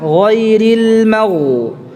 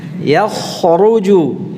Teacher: Hanya saja bedanya antara ghain dengan kha, itu yang satu ghain itu tertahan nafasnya, sedangkan kha itu mengalir nafasnya